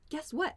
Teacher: you should say it with that like excited sort of upward intonation